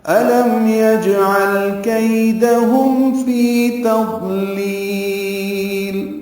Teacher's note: میم ساکن پہ اظہار ہے، جیم ساکن پہ قلقلہ ہے. یجعل عین وسط حلق سے ادا ہوا، لام ساکن پہ اظہار ہے.